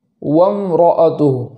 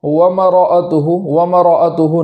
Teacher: آگے ہے وامرأتہ حمالۃ الحطب، اس کلمے کے اندر وامرأتہ کے اندر میم پر زبر نہ ہو جائے، اس بات کا خیال کرنا ہے، اس طریقے سے پڑھیں گے وامرأتہ، میم کا جزم ادا کرنے کے بعد آگے والا حرف را ادا ہو، اس طریقے سے پڑھیں گے وامرأتہ، ایسا نہ ہو ومرأتہ، ومرأتہ نہ ہو۔